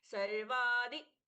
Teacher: सर्व के आदि द अल्पप्राण अल्पप्राण यानी हल्के से बोलना है बहुत ज्यादा उसको फोर्स करके ध नहीं करना है